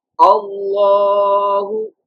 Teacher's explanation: The lamb of Allah's name should pronounce in a thicker voice